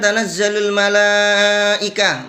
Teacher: mala dibaca panjang lebih dari satu alif. Ada hukum di sini namanya mad wajib muttasil.